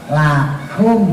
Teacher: Nah ini yang membedakan dengan kaf. Lakum, kalau kaf itu ujung lidah sampai pangkal lidah lurus, makanya keluar hamas